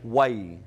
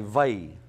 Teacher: You might find yourself using it with a softer W. You might find yourself using it with a more pronounced V sound.